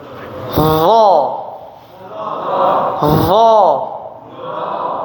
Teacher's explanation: Tarful lisan, ujung lidah. Bersentuhan dengan ujung gigi seri atas ya. Gigi yang depan. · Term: huruf dha